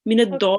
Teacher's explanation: Okay, and then you will press on the lam because the lam has a shadda. Press on the lam, join to it, and then you will carry on reading the leen. Okay, so we have to make sure we join the door when we have, after we have prolonged it to the leen, and we have to press on it because it has a shadda here.